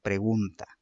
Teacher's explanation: En gun es aquella que recibe el golpe de voz, es aquella la que es la acentuada, la tónica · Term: sílaba tónica